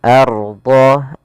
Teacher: apabila ada huruf ra sukun didahului dengan harakat fathah, maka dia tebal ra-nya. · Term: ra tafkhim